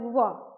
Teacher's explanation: व का उच्चारण करते हैं तो मेरे दोनों साइड से थोड़ा सा ओष्ठ जो है टच होता है व, और मेरा ऊपर वाला दांत है वो नीचे वाले ओष्ठ में थोड़ा सा टच होता है व।